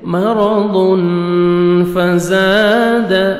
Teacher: तनवीन के बाद 15 लेटर्स में से फा है, इख्फा करेंगे, नोज में साउंड लेके जाएंगे · मरदुन फज़ाद, जा अलिफ, जा को जोर से पढ़ेंगे, अलिफ मद्दा 1 सेकंड आपने जा को खींचना है।